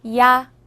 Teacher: 야는 먼저 이를 소리 내다가 바로 이어서 아를 소리 내며 발음합니다. 이와 아를 순서대로 빠르게 말해요.